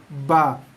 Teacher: Keluar daripada dua bibir, ada tekan sikit, ada tekanan sikit, kaki bibir sikit, lepaskan ba.